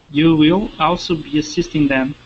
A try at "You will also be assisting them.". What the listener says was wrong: Okay, give me a good L there on will. And that's so difficult because you have you and then will, and your mouth is already in that ooh. Ooh sound.